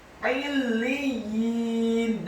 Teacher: huruf ya-nya ditasydidkan, ditekankan, kasroh 2 harokat karena sebelahnya ada ya sukun. Illiyin, dan huruf nunnya di akhir ayat dibaca sukun.